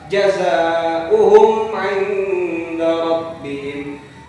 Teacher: Sebelumnya ini adalah huruf izhar syafawi, mim bertemu dengan ain, dibaca izhar syafawi 1 ketukan, jelas.